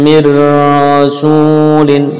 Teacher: nun dimasukkan ro tanpa dengung, namanya idgham bila gunnah